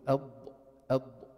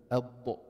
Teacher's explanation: حافه اللسان مع الصفحه الداخليه للاضراس هناك الضاد